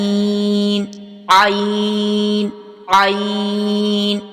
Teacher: ये हलक के दरमियानी हिस्से से अदा हो रहा है